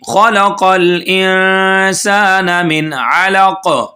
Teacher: خا کو موٹا پڑھیں گے، قاف کو بھی موٹا پڑھیں گے